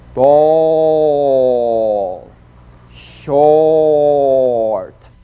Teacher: The midway lip opening produces the vowel sound o as in ball.